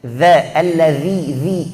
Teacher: Keluarkan ujung lidah. Ini zal bukan zai.